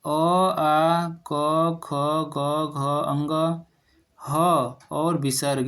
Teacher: तो कंठ से उच्चरित होते हैं।